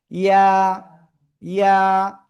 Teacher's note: জিহ্বার মধ্যখান, তার বরাবর উপরে তালুর সাথে।